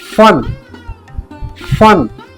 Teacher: ਉਚਾਰਨ ਕਰੋ ਫਨ ਫਨ ਹੁਣ ਤੁਸੀਂ ਦੇਖੋਗੇ ਉੱਪਰਲੇ ਦੰਦ ਥੱਲੇ ਵਾਲੇ ਬੁੱਲਾਂ ਦੇ ਨਾਲ ਟੱਚ ਹੋ ਰਹੇ ਨੇ